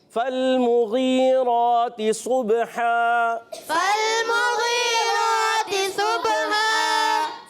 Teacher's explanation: با پر قلقلہ ہوگا. دو زبر کی تنوین کو الف سے بدلیں گے اور الف سے بدلتے ہوئے ہا کی ادائیگی درست رکھنی ہے.